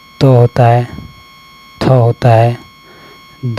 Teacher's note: दांत और जीभ के स्पर्श से बोले जाने वाले वर्ण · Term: दंत व्यंजन